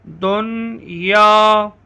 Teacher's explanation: ان میں نون ساکن کے بعد حروف یرملون میں سے یا اور واو آ رہے ہیں، لیکن یہاں اظہار مطلق ہوگا، غنہ نہیں ہوگا۔